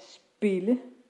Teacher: vokalen er altså ikke lydret og i lyder som e